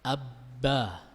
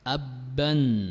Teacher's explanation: ketika mengucapkan ba yang tasydid, ini tidak boleh ada suara di khayshum, di rongga hidung.